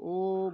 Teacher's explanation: ও যখন বলি জীবটা পেছনের দিকে উঁচু হয় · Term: ও স্বরধ্বনিটা